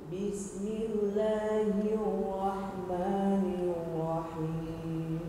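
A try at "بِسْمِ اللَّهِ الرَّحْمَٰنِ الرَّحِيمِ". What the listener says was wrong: Tinggal ro-nya. Ro ini ada takrir namanya, yaitu getaran, tapi tidak berlebihan juga, sedikit hir. Ada r-nya, suara r-nya.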